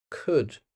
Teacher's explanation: We don't say the L. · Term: silent L